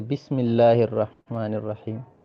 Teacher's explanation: جب یہ درمیان میں اسم آتا ہے تو حمزہ نہیں پڑھتے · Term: حمزہ وصلی